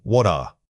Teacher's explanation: the t in what and the following vowel must link together. The transition should incorporate a soft audible flow of air.